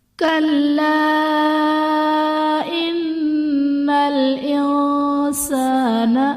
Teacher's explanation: کلا ان الانسان، کلا میں الف سے پہلے زبر ہے، الف مدہ کا قاعدہ، اور حرف مدہ کے بعد حمزہ دوسرے کلمے میں ہے تو یہاں پر مد منفصل کا قاعدہ ہوگا۔ ان میں نون مشدد ہے، یہاں پر غنہ کریں گے۔ انسان میں نون ساکن کے بعد حروف اخفا میں سے سین ہے تو یہاں پر اخفا کا قاعدہ ہوگا۔